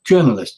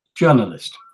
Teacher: Well, in English, it's journalist. It's on the first syllable, journalist.